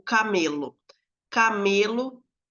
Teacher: em camelo ela é uma paroxítona porque a penúltima sílaba vai ser a acentuada · Camelo, o acento aí, a tonicidade é no me, acento não gráfico